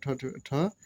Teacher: मूर्धन्य महाप्राण अघोष व्यंजन वर्ण का उदाहरण है